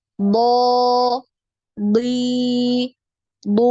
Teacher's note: Ketika kasroh huruf bod ini tetap terdengar tebal.